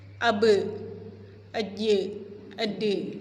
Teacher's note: Yang ba, jim, dal sifat hurufnya kan istifal ya, tipis. Jadi suara qalqalahnya tipis.